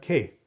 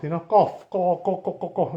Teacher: kof, right, is a little bit deeper in the side, in the mouth, kof, kof, it's inside the mouth more.